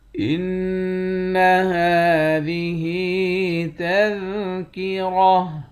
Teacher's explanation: نون مشدد پر غنہ کریں گے، ہا کے اوپر کھڑا زبر ہے، ایک الف کی مقدار کھینچ کر پڑھتے ہیں۔